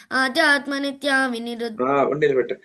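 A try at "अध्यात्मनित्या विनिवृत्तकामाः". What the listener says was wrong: ఆధ్యాత్మ కాదు మొన్ననే చెప్తు కదా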